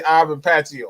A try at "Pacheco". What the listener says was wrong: It's we're not too far off. You just pronounce that C and we all right. It's Ivan Pacheco. Pacheco.